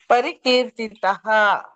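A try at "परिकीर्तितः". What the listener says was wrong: ಕೀರ್ತಿತಹ ಅಲ್ಲ ಕೀರ್ತಿತಹ ಸ್ವಲ್ಪ ಎಳಿರಿ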